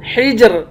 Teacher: یا کو ایک الف کی مقدار کھینچ کر پڑھیں گے، حجر جیم حروف قلقلہ ہے، اس کو قلقلہ کر کے پڑھیں گے ، حجر آخر میں را ہے، اس را کو باریک پڑھیں